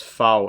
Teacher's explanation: the pronunciation of the letter itself is /faʊ/ in German, with that /f/ sound